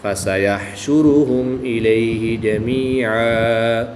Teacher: 2 زبر کی تنوین کو وقف کی حالت میں الف مدہ سے تبدیل کر کے پڑھیں گے